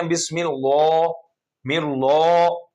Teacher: اللہ کے نام کو موٹا نہیں کریں گے جب اس سے پہلے زیر آ جائے. تو زیر آئے گی تو اس کو باریک کر کے پڑھیں گے.